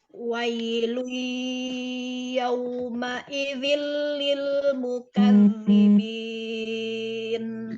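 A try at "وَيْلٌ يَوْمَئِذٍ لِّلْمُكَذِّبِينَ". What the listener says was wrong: Bisa tambah alirkan ke hidungnya, di aliran ke hidungnya ditambah lagi. Wailui, wailui, lui. Kerasa ya dari hidung ya? Wailui. Jadi nyaring, dua-duanya nyaring.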